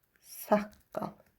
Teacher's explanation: Saqqal sözündə birincisi k-ya dəyişir.